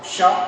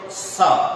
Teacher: उदाहरण के तौर पर एक छोटा सा बता रहे हैं, जैसे तालव्य स्वर है, तालव्य स्वर का उच्चारण यदि तालु से हम नहीं करते हैं, यदि उसका उच्चारण हम दंत से कर देते हैं तो कैसे? तालु से करेंगे तो तालव श, यदि दंत से करेंगे तो स